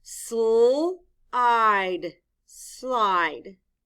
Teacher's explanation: the sounds are said closely together listen stove look at slide s and l are said very closely together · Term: consonant blend